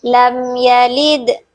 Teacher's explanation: Lid di sini memiliki hukum bacaan qalqalah sugro sebab ada huruf qalqalah yang mati, yang sukunnya mati di tengah kalimat sehingga dia harus dibaca secara lebih kecil atau tidak terlalu berkumandang seperti qalqalah kubro.